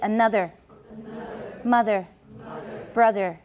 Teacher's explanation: Words in which the consonant in the middle is voiced.